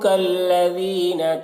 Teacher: ज़ाल को बारीक पढ़ेंगे